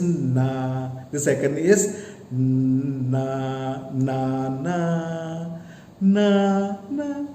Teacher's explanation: The first na has low tone. The second na has a higher tone compared to the first. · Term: tones